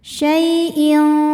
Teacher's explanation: Syai ada harfulin sebab ada ya sukun yang sebelumnya berbaris fathah, maka kita lembutkan atau kita lunakan bacanya